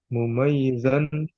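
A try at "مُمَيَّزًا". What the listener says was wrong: mumayya, jangan i.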